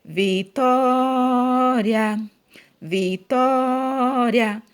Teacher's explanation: o que eu mais demorei falando aqui foi a sílaba tó. Então, tó é a sílaba mais forte, ou seja, é a sílaba tônica.